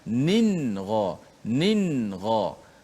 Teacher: pastikan hujung lidah kena betul-betul mati pada makhraj nun, dan tidak boleh panjangkan gunnah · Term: izhar